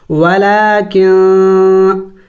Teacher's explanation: نون ساکن ہے اخفا کیا جائے گا یعنی ناک میں آواز چھپانا ہوگا نون کو ظاہر کر کے نہیں پڑھیں گے